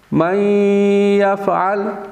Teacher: نون ساکن کے بعد یا ہے، ادغام غنہ کے ساتھ